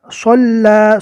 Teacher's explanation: ارأیت الذی ینہی عبدا اذا صلی، صلی پڑھیں گے تو یہ سین ہو جائے گا۔ صلی، صاد کو پور پڑھنا ہے منہ بھر کر